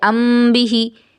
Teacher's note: جب میم ساکن کے بعد با آئے تو میم میں اخفا ہوگا